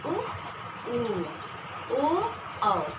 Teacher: जिन स्वरों के उच्चारण में हमारे ओठ गोल होते हैं, उन्हें हम वृत्तमुखी स्वर कहते हैं